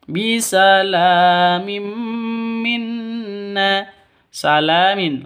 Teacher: la panjang dua ketukan di sini karena ada alif